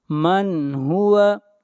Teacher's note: وعلیہ توکلنا قل هو الرحمن آمنا به وعليه توکلنا فستعلمون من هو. من یہاں پر نون ساکن پہ اظہار ہوگا، اس لیے کہ نون ساکن کے بعد حروف حلقی میں سے ہا ہے